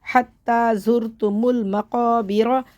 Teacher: را کے اوپر زبر ہے اس لیے رخ موٹا پڑھیں گے ، حتی زرتم المقابر، وقف کی صورت میں زبر ختم ہو